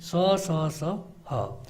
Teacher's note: जिनका उच्चारण करते समय जो हवा है मुंह के विभिन्न भागों से टकरा करके थोड़ी गर्मी पैदा कर रहे, उष्मा पैदा करे, उन्हें हम उष्म व्यंजन कहते हैं। और ये भी 4 होते हैं, स, स, स, ह।